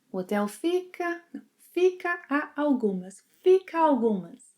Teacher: when speaking we end up linking a algumas